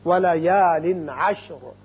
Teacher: وقت کی صورت میں را ساکن ہوگا اور پر بھی ہوگا، اس لیے کہ پہلے زبر ہے · یہاں تنوین کے بعد عین جو کہ حروف حلقی میں سے ہے آ رہا ہے، لہذا یہاں اظہار حلقی ہوگا